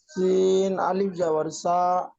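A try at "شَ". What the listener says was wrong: খুব সুন্দর পড়েছেন, তবে শিন অক্ষরটি টান দিয়ে পড়তে হবে, আপনার টান হয়নি। শিন আলিফ জাবার শা। তিনটে একসাথে বানান করবেন না জি। প্রথমে দুটি বানান করবেন, দুটি বানান অ্যাডজাস্ট করবেন।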